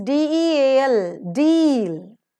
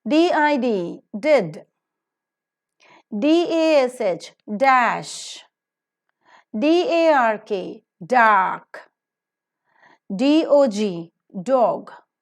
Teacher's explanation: alveolar because the alveolar Ridge or the teeth Ridge is involved in the production of the sound